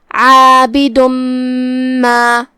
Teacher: ادغام کا معنی ہے حرف کو حرف میں داخل کر دینا، جو کہ تنوین کی اصلیت اور اس کی ادائیگی نون ساکن ہوتی ہے، تو ہم یہ تنوین کو میم میں داخل کر کے غنہ کے ساتھ اور تشدید کے ساتھ یہ حکم کو ادا کریں گے. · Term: ادغام بغنہ